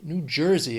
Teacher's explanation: 3 syllables. Stress is on, well, the first syllable of the second word